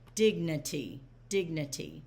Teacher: the stress syllable is dig. It's not dignity, it's dignity.